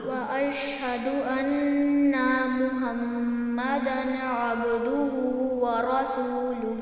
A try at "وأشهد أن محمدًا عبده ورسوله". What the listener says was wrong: अब दोबारा पढ़ो, अन्ना को लंबा नहीं करना। वअशहदु से दोबारा पढ़ो, अन्ना नहीं होना। وأشهد أن محمدًا عبده ورسوله.